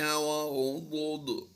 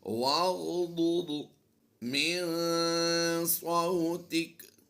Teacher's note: ضاد اور ضاد دونوں کو ہم نے ملا کر پڑھنا ہے اور غین کی ادائیگی بھی پر کرنی ہے